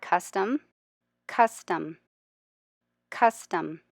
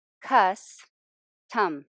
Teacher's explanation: Cuss is much longer. Tum is shorter, so cuss is accented.